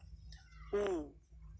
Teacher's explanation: mengumpulkan mulut, dua bibir ke depan. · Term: Dhamma